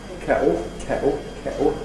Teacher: a glottal stop for [t] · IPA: [ˈkeʔo]